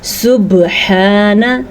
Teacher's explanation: با کے اوپر ساکن آنے کی وجہ سے یہاں پہ قلقلہ ہوگا، تو ہم یہاں پہ جھٹکے سے پڑھیں گے